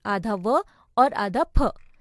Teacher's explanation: दंतोष्ठ्य यानी निचले होठ व ऊपरी दांतों से, आधा व और आधा फ।